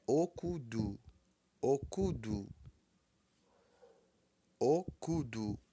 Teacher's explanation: o Tom baixo cu Tom alto e du Tom médio